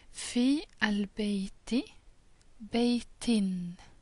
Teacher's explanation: When this happened, the last vowel is changed into a kesra, to an I vowel.